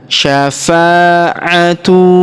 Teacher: Huruf fa kita panjangkan dua harakat karena alif di depannya